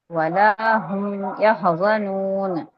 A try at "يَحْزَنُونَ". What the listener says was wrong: يحزنون نہیں ہے، یا میں آپ اس کو حرف ٹائم نہیں دے رہی، یح کر کے يحزنون